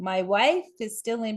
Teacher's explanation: wife is louder. My facial expressions change. My eyebrows go up, right? The tone and pitch are a little higher.